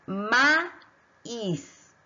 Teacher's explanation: Las vocales quedan separadas, por lo tanto es un hiato.